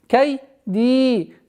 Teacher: Долгота в размере двух огласовок касры.